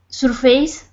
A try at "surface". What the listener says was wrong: Okay, because the stress is on the first syllable, so that means the second syllable, you don't really say the vowels. It looks like face, but it's not. It's fis. Surface.